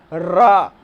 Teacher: तो अब रा बोल रहे हैं तो आपकी जीभ में कंपन हो रहा है, अर्थात कि यह कंप रही है, यहाँ पे प्रकंपित वर्ण हो गया। लुंठित कैसे कहिए, आप रा बोल के देखिए, आपकी जीभ पीछे की तरफ मुड़ जा रही है, इसलिए यह लुंठित।